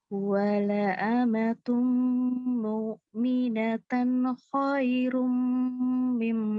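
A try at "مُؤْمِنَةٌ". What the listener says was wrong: Kepanjangan nanti. Mu'minatun. Mu'minatun. Hati-hati ya, jangan ini kayak tadi kayak gimana ya, kayak ain sedikit.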